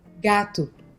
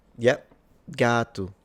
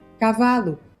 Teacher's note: while it's spelled the same as Spanish, the O to my ear sounds like a U